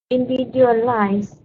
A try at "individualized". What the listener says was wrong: Individualized. Don't forget the D at the end. Individualized.